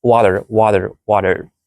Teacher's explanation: In water, the T isn't a clear T sound. It's a sound called a tap. So to make a tap, you need to have your tongue, this is your tongue, quickly touch the roof of your mouth, 上 颚.